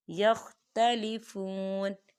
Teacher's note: واو ساکن ہے، واو ساکن سے پہلے پیش ہے تو یہاں پر واو مدہ ہو رہا ہے تو ہم اسے 2 حرکت کے برابر کھینچیں گے